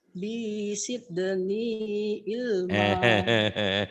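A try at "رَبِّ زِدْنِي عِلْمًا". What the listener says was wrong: Robby Sydney. Jangan Sydney Bu. Itu Z. Z-nya Robby Sydney Bu. Jangan Robby Sydney.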